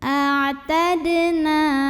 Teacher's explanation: Berikutnya ada qalqalah sugro, sebab ada huruf qalqalah yaitu dal yang sukunnya sukun asli dan ada di tengah bacaan. Maka dibacanya dipantulkan dengan pantulan yang kecil.